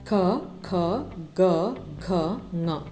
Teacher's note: ಕ ವರ್ಗದ ಅಕ್ಷರಗಳು ಕಂಠ ಭಾಗದಲ್ಲಿ ಹುಟ್ಟುವುದರಿಂದ ಅವುಗಳನ್ನ ಕಂಠ್ಯ ಅಕ್ಷರಗಳು ಅಂತ ಕರೆಯಲಾಗುತ್ತೆ